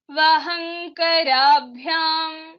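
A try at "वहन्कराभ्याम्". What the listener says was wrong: Here you should not say vahankarabhyam. That nakara kakha gaghanga should not come. It is nakara. Vahan is one word, karabhyam. So it's vahankarabhyam.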